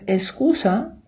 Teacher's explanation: в Іспанії багато хто каже ескуса ковтаючи к